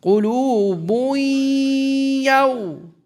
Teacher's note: With غنة. You drop one of the dhammas, so it comes boo. Then we merge it with the ya. And remember, the ya is given a shadda. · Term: Idgham